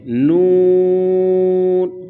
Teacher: पांच हरका के बराबर हम इसको खींच कर पढ़ेंगे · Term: मद